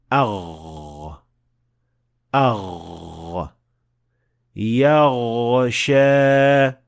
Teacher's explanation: soft palate not fully touching because the sound of Vine is a continuous sound which means that it can be extended for as long as you want